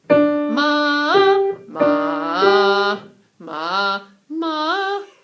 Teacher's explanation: the third intonation, which is the leaning tone on the lower pitch